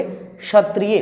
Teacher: जैसे मैंने कहा क्षत्रिय, ये क्षत्रिय नहीं है, इसको पढ़ेंगे क्षत्रिय। मैंने क और श का मिश्रण लिया है